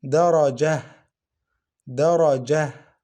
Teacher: We pronounce this ta as ha without any vowel. So for this one, we don't have lengthening.